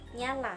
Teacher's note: Yang ke-21, bunyi N. Ciri-cirinya hidup, nasal, laminopalatal.